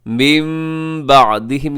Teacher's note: نون ساکن کو ہم میم سے بدل دیتے ہیں، اس کو اقلاب کہتے ہیں